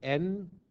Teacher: n is the voiced alveolar nasal